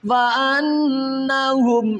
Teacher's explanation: نون مشدد ہے یہاں پر غنہ کریں گے